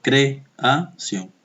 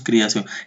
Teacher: Pronunciamos la E como si fuera I. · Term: sinéresis